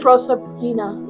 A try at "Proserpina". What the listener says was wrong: You added another R. You said Proserpina. Proserpine. Proserpine. Proserpine. Proserpina.